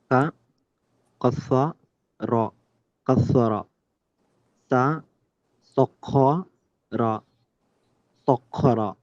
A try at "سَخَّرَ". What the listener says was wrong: Sakhara. Okay, there's a difference between sakkara and sakhara. Sakkara and sakhara. Let your throat, let there be movement at the back. Don't keep it rigid. Sakkara. No. Sakhara. Kha, kha, kha. Don't fight with the letter. No, let it come out, but just emphasize it. Sakhara. Kha.